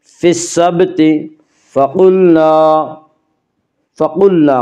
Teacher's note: فقلنا قاف کو پر پڑھیں گے، قاف حروف مستعلیہ میں سے ہے۔